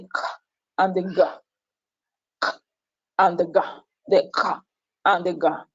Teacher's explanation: The velar plosives are articulated with the back of the tongue against the soft palates.